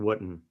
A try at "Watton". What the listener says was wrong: Watton. Pretend it's got an A. Pretend it's got an A in it.